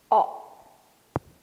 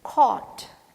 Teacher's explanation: It should be oval, and you have to just open up and tell it is o. And this is a long sound.